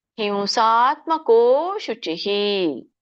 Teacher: ಕೋ ಎಳಿಬೇಕು, ಯಾಕಂದ್ರೆ ಅವಗ್ರಹ ಇದೆ.